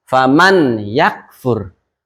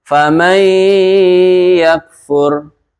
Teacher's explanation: nun matinya dimasukkan ke dalam huruf ya, dilebur ya, dileburkan ke huruf ya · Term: idgham bi gunnah